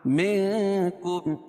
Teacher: ذالک, ذا کھڑا زبر ہے, منکم اخفاء حقیقی, کیونکہ نون ساکن کے بعد حروف اخفاء کے 15 حرفوں میں سے کاف ہے تو یہاں ناک میں آواز کو چھپا کر پڑھیں گے